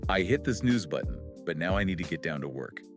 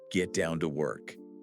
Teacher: Do you feel how get down to sort of melts together into one fluid sound? · You rush through those middle words to hit the strong beat on work.